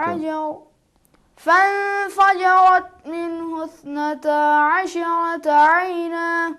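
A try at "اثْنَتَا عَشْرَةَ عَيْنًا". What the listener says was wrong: अशा ने अश शीन में कलकला नहीं करना अशरत आईना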